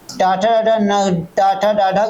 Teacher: टाटा टाटा डाढ की बात रही यह कहां से उच्चारित होते हैं मूर्धा से होते हैं